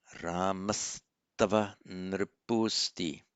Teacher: the visarga followed by a t becomes into an s